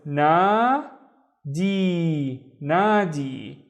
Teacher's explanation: So it's a long vowel. It just makes the d twice as long. So it's d, d.